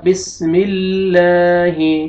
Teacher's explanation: جب کسرہ آئے گا تو لام کو دیکھیں ہم باریک کر کے پڑھیں گے